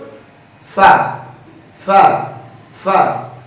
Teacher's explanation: ফা হরফটি পড়ার সময় আওয়াজ একেবারে নরম হবে, চিকন হবে, নিচের দিকে দাবিত, হামস বাতাস চালু, আওয়াজও চালু · নিচের ঠোঁটের পেট সামনের উপরে দুই দাঁতের আগার সঙ্গে লাগিয়ে ফা হরফটি উচ্চারিত